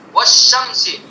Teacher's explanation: لام ہے الف لام ہے لیکن نہیں پڑھا جا رہا ہے، اس کا ادغام کر دیا شین کے اندر